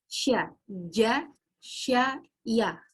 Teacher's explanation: Tengah lidah dengan langit-langit.